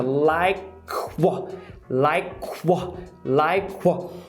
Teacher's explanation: Porque enquanto você está pronunciando lá atrás, você já está arredondando os seus lábios para pronunciar o do what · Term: labialização